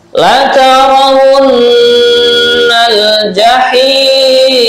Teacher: Nah, la-nya dibaca pendek, karena tidak ada tanda-tanda mat, Kemudian wun. Nah, ini nun bertasydid dibaca gunnah atau mendengung.